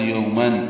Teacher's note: تنوین کے بعد حمزہ ہے تو یومن اظہار ہے